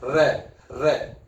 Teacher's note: रे को जब उच्चारण करेंगे तो जीभ कंपन करती है, रे, रे कंपन करती है, इसलिए रे को प्रकंपित माना जाता है।